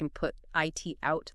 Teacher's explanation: The T might be held or sort of disappear like and put it out. The final T might be very soft or unreleased. You stop the air but don't quite pop the T.